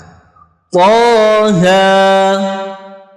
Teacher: harakatnya fathah panjang ya atau fathah berdiri ini dibaca satu ayunan saja atau dua harakat